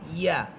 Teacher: ইয়া জিহ্বার মধ্যখান উপরে তালুর সাথে লাগবে। ইয়া। অনেকেই ইয়া হরফটাকে মুখের খালি জায়গা থেকে হামজার মতো করে বলেন, এটা ভুল।